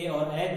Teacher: ए और ऐ दो ऐसे वर्ण हैं जो कंठ तालु के अंतर्गत आते हैं